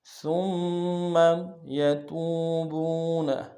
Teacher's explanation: سا کو باریک ادا کرتے ہوئے میم کے سامنے آنا، میم کے اوپر تشدید زور دیں گے